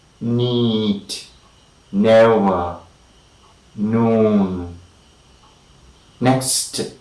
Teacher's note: the front and the tip and the outer rim of the edge or the bring of the tongue is lifted up against the roof of the mouth and we have a closure between the tongue the entire bring